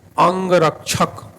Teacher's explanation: इसका उच्चारण करते समय वायु मुख से कम नाक से अधिक बाहर निकलती है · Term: अनुस्वार